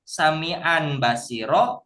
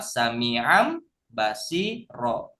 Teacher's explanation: Harusnya sami'an basiro, kalau iklab sami'am basiro. Merubah mim disertai dengan dengung.